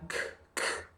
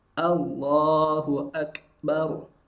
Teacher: kita lihat ada proses tertahannya suara Lalu ada proses percikan nafas percikan nafas dalam Kaf sukun itu tidak terlalu banyak